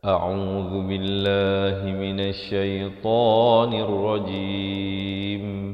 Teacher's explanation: Hamzah makhrajnya di pangkal kerongkong. Ain makhrajnya di pertengahan kerongkong. Zal makhrajnya di hujung lidah. A'udzu billah, dan lafz jalalah dibaca nipis 2 harakat.